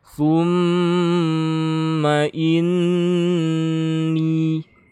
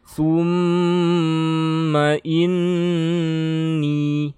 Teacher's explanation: Jadi bacanya gunnah, harus ditahan. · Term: gunnah musyaddah